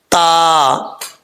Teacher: زبان کی نوک اوپر والے دانتوں کی جڑوں سے لگے تو تا پڑھا جاتا ہے